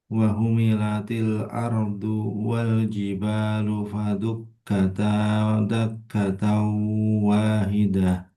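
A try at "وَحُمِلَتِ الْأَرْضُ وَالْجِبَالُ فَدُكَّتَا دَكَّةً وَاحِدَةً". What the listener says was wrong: Dijelaskan lagi jangan wahu, wahu, wahu, tengah tenggorokan. Wahumilatil. Wahidah.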